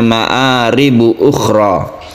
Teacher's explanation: khoknya ini karena dia itu berada di tenggorokan yang paling atas sehingga khoknya itu menimbulkan bunyi khok gitu ya. Ukhra itu harus diperjelas suaranya, makhrajnya, sifat-sifat hurufnya.